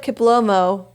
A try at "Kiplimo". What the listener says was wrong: I think the first part of that word goes real fast.